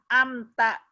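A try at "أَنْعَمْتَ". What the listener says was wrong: Alifnya yang tengah.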